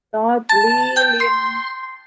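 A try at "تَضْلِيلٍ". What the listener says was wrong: Jangan ada pantulannya. Dihilangkan pantulannya. Lilin.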